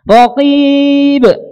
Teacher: huruf yang tipis, maka qalqalahnya tipis.